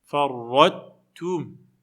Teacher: Donc, quand tu récites, tu prononces farrat, tu fais pas un idgham, tu rentres pas le ta dans le ta. Tu dis pas farrattum.